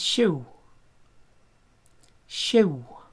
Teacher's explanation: the end there is a long W. Long W doesn't exist in English. But we have ew, and the w is held.